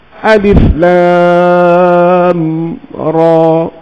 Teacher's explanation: Maka ra itu dibaca dengan 2 harakat. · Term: mad tabi'i harfi